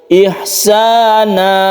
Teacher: Tanwin ini diganti menjadi mad sehingga panjangnya satu alif. Ihsana, panjangkan satu alif ketika dia itu waqaf. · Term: mad iwad